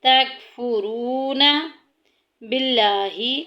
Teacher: لفظ اللہ کا لام باریک پڑھا جائے گا